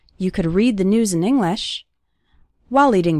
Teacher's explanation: the stressed syllables are read news and the first syllable of english